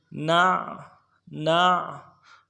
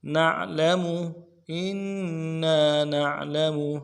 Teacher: إنا نعلم نون کو عین کے ساتھ ملانا ہے، عین میں آواز جاری رہے گی، عین کو موٹا کریں گے